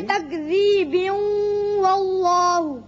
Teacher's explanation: وصل کی صورت میں با کی تنوین واو سے ملے گی اور ادغام بغنہ ہوگا